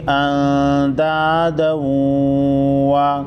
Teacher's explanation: نون ساکن پر اخفائی حقیقی ہوگا